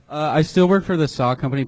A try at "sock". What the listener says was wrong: Yeah, the last time I heard a CK that silent, it was Louis this